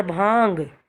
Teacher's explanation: अब सांस में से, नाक में से भी आवाज़ आ रही है और गले में से भी आ रही है · भांग, गले में से भी आवाज़ आती है और नाक में से भी आती है। ठीक है, तो यहाँ पर आएगा चंद्रबिंदु। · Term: अनुनासिक